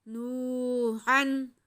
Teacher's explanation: उसके बाद हा हल्की है तो इस पे इजहार होगा, तनवीन को वाज़े करके पढ़ेंगे।